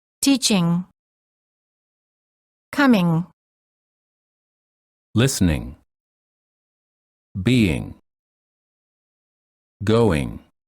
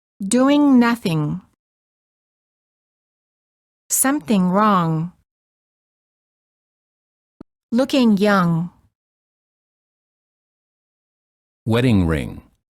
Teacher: To create the ng sound, raise the back of the tongue and let it touch the soft pallet, which is the back soft area of your mouth. Don't release your tongue when you say the G or just release it slightly. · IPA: /ŋ/